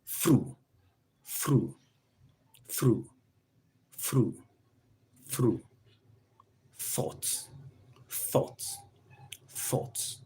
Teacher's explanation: Voiceless dental fricative.